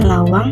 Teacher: Konsonan akhir eng pada lawang dilafalkan dengan suara sengau yang jelas.